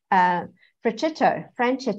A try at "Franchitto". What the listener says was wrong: Franchitto, actually. It's a CH is solid, not a soft CH. So it's Franchitto.